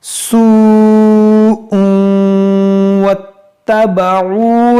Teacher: یہاں پر دیکھیں واو ساکن سے پہلے پیش ہے، یہ واو مدہ ہے، اور واو مدہ کے بعد حمزہ اسی کلمے میں ہے تو یہاں مد متصل ہوگا